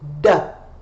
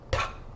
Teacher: You notice that my mouth pretty much does the same thing for both sounds. The difference is my voice, my vocal cords are vibrating. So it's a difference between a quiet and a noisy.